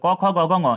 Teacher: इन सभी का उच्चारण कंठ से होता है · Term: क वर्ग